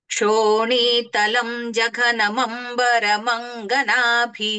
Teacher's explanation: క్షోనీతలం జగన అన్నప్పుడు ఆ తలం తర్వాత పెదాలు మూయకుండా జగన పలకాలి